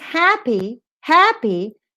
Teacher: happy ha is a strong syllable